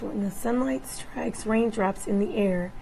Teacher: moderate to severe dysphonia characterized by roughness, breathiness, weakness, and strain